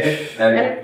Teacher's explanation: বাতাস বের হতে হবে দাঁতের ফাঁক দিয়ে নিচের ঠোঁট দিয়ে উপরের দাঁত স্পর্শ হবে এবং বাতাস বের হবে